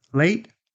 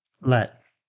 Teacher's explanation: A is tense, E is lax. Think A equals movement, while E equals stillness. · focus on the glide for the A and no movement for the eh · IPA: /eɪ/ vs /ɛ/